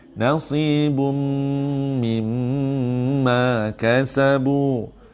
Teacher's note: ni dengung lekat kerana mim sabdu.